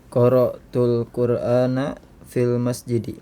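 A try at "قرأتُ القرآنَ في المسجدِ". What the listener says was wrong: Naam, sahih.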